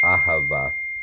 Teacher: This consonant, the aleph, has no consonantal value of its own, so to speak. So it's a, ha, short, va, long.